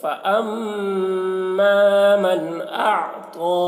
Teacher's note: حمزہ کو عین سے ملائیں گے تو عین کو حلق سے ادا کریں گے اور تو کو موٹا کر کے پڑھیں گے